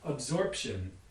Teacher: clearly has a final voiced labial stop in it in english you put the suffix on it it becomes absorption with a voiceless stop instead